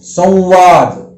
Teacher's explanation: संवाद में नासिका से तो आवाज निकल रही है, लेकिन ऐसा लग रहा है जैसे संवाद में और आधा व एक और मिला हुआ है